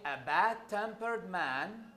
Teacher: Now, however, when I say Ibrahim is a bad-tempered, when I say a bad-tempered man, so stress, yes, is changed into bad. So bad-tempered here, the primary stress is on bad. It is not on tempered anymore. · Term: variable stress